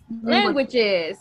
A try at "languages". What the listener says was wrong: Very good. It's plural.